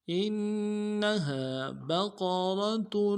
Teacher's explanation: انہا بقرۃ، با کو نرم سے ادا کریں گے، قاف کو موٹا کرنا ہے، را کو موٹا کریں گے